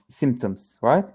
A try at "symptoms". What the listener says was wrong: Yeah.